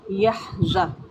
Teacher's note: زا کو سختی سے ادا کریں گے، سیٹی والا حروف ہے۔